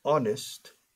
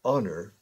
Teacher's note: empiezan por H, consonante, pero la H muda. Entonces empieza por sonido de vocal.